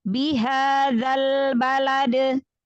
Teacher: Qalqalah kan pantulan, cepat.